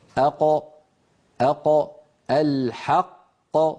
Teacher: القاف كما نرى في اللوحة تخرج من أقصى اللسان مع ما يحاذيها من الحنك اللحمي. أق الحق. ولاحظوا بأن هذه المنطقة ترتفع، منطقة أقصى اللسان ترتفع كما نرى في اللوحة، وتقرع المنطقة التي اسمها الحنك اللحمي.